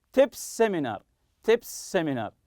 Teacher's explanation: you have to link it together as if it's one sound